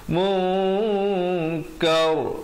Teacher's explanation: Yang betulnya mungkar, ro jadi tebal